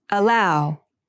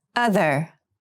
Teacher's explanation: allow has the more closed sound and other has the more open Sound